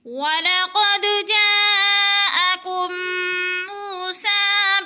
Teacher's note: میم ساکن کے بعد میم مشدد آ گئی ہے تو ادغام کریں گے، یعنی سختی سے جمع کر پڑھیں گے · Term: ادغام شفوی